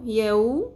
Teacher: یا زبر واو یو، واو ساکن سے پہلے زبر حرف لین نرمی سے ادا کرنا ہے. یو میم زبر م یوم.